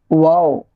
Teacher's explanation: اس کو منہ گول کر کے جلدی سے ادا کریں گے واو، واو نہیں واو۔